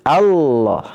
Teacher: Nah, ini karena sering digunakan ya alasannya likasratul karena seringnya digunakan dibuang hamzahnya pada kata al-ilah itu menjadi Allah ya ditebalkan dan hanya lafaz Allah yang mufakhamah ya lamnya itu ditebalkan